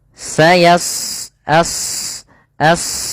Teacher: huruf shad salah satu sifatnya adalah isti'la yaitu pangkal lidah terangkat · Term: shad tebal